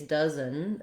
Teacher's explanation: our O doesn't really follow the rules here. It is a vowel schwa